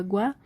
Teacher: a semivogal, a vogal de som mais fraco, a vogal mais átona, ela vem antes da vogal de som mais forte, ou seja, o som ele sobe. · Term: ditongo crescente